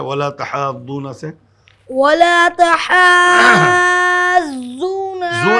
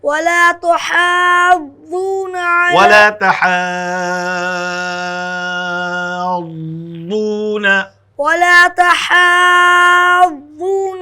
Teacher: وَلَا تَحَاضُّونَ، زو نہیں، ضاد ادا کیجئے، زبان کا کنارہ داڑھ میں لگائیں گے